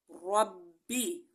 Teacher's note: را کو موٹا ضرور پڑھیں گے کیونکہ را کے اوپر زبر ہے